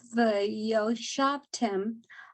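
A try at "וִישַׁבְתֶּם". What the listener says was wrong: Oh, so this is there's the yud is not really pronounced. V shavtem.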